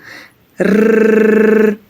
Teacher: Він утримується за верхніми зубками і дрижить.